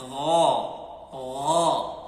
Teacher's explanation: غائن کی آواز ہماری حلق کے پہلے حصے سے نکلتی ہے. یہ پہلا حصہ یہ والا ہے جو میں نے آپ کو بتایا کہ جہاں سے ہماری زبان شروع ہو رہی ہے، نیچے زبان کی جڑ یعنی زبان جہاں سے شروع ہو رہی ہے، یہ ہماری حلق کا پہلا حصہ ہے.